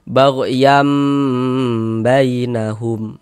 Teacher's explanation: Perhatikan lagi, huruf ba adalah huruf iqlab. Maka nun sukun atau tanwin kalau bertemu dengan huruf ba, hukumnya adalah iqlab. Cara membacanya dengan merubah menjadi huruf mim.